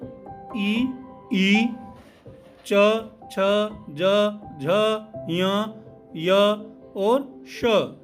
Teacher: ई च छ ज झ य और श, इन सभी का उच्चारण स्थान जो है वो तालु है। इनके उच्चारण में जीभ तालु को छूती है, अतः इन्हें तालव्य वर्ण कहते हैं।